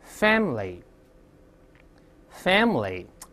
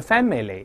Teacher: 这个短音哎是不发音的，理论有但字典是斜体字印刷不读 ，所以读成▁fam▁fam▁那个哎不读出来，我们可以体会一下▁family▁family▁哎，而不是▁family▁那个哎不发音啊。你像舒服的，咱们以前也说过▁comfortable，▁而不要读成▁comfortable，▁那个▁or▁不发音。蔬菜▁vegetable，▁而不是▁vegetable，▁后面那个哎是不发音的，所以这好多呢看似发音其实不发音啊。我们再来一遍▁memory▁memory▁memory▁就好了，就不要读▁memory，▁那个